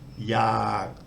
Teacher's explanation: It's a dead syllable because it ends with the gorgai, the unreleased K sound, and it's got a long vowel, that's sara-a. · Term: low tone